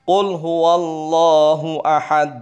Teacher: " Ahaad" tidak tepat. Maka 'dal' haruslah qalqalah. Ahad. Qalqalah artinya memantul, ya.